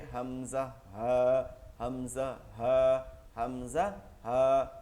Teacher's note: 1 নম্বর মাখরাজ হলকের শুরু হইতে হামজা হা